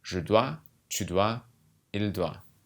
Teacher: you don't pronounce the last consonant of these words